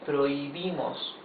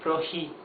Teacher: you don't pronounce the h it has no sound not even the soft sound that it has in English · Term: mute, the H is totally mute